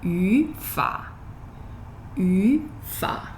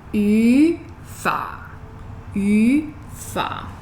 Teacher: So that's two third tones. That's why you're saying second, third.